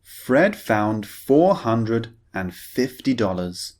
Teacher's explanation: the first sentence we're focusing on the f sound the unvoiced f sound